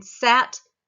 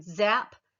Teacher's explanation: I'm not quite putting my tongue up to that alveolar ridge, but it's going up towards that alveolar ridge when I'm using S as in sat, or Z as in zap.